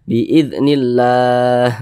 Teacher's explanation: sehingga namanya berubah dia menjadi mad arid li sukun. Panjangnya itu boleh 2 harokat, boleh 4 harokat, boleh 6 harokat.